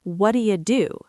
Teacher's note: The t in what becomes a d sound and do you becomes duh. So it sounds like what do you do. · What do you often becomes what'ya or wudya. The T in what becomes a D sound and do you becomes duh. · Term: quick blended sound